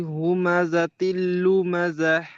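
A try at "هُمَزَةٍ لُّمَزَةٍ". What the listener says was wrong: জাহ, এই হা নয়, গম্ভীর আওয়াজ হয়। এই হুমাযাতিল লুমাযাহ। হুমাযাতিল লুমাযাহ, গম্ভীর আওয়াজ হবে। আর লুমাযাহ। হ্যাঁ, এই হাটা ঠিক হচ্ছে না, হাটা, এই হাটা গম্ভীর আওয়াজ হবে না, ছোট হা।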